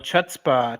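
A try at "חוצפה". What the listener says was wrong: Chutzpah. Chutzpah. So you don't pronounce the C. The C is silent. So you just do the H.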